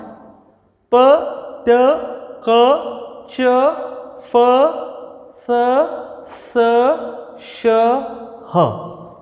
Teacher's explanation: So all these sounds are known as voiceless sounds. No vibration, no hum sound is there.